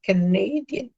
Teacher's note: That is, stress falls on the second syllable or on the penultimate vowel.